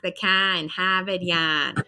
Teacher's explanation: it's kind of a flat A, and he's going to drop the R. So a lot of people in Boston don't really pronounce the R like we've seen in other accents.